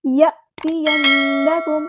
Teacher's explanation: نون پہ غنہ زمانی ہو رہا ہے، ایک الف کے برابر رکیں گے